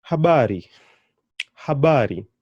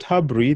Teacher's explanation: So you can hear that the emphasis is going on the bar.